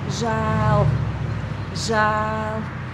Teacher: There is the long vowel, it's the broad form of that vowel. It can be pronounced narrow as well, as ē, but in this word we pronounce it broad.